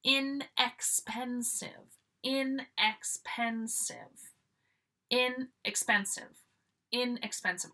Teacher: Always stressing the in, stressing the prefix, guys, because that's giving that opposite meaning.